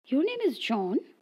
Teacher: with a rising intonation high final pitch indicates a question